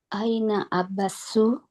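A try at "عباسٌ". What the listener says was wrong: Aina Abbasun. Nah, jangan sampai lupa nih. Tanwin ya. Abbasun.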